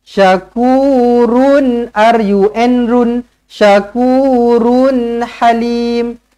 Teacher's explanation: jelas dan terang tak payah dengung